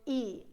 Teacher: So I pull my mouth and I go E, and my tongue is right at the front.